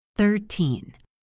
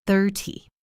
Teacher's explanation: When I say 13, my voice goes up at the end.